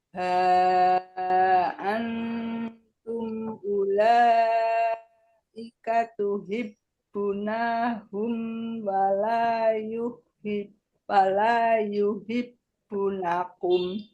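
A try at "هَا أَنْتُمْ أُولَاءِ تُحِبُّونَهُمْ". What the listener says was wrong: itu Bu ulai, bukan ulaika, bukan, nggak ada kanya. Enaknya ada kanya.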